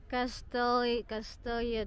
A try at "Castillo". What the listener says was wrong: Castillo. It's not pronounced that way. Double L is E-E-L.